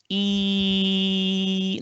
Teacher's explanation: There's absolutely no obstruction of the air in producing E.